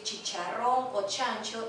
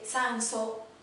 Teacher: Muchas veces tiene que decir chicharrón o chancho y dice ticharrón y dice sanso. Cambia la che por la S, entonces no hay una articulación adecuada.